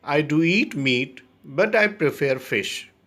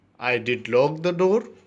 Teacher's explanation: In these sentences, the auxiliary is stressed strongly.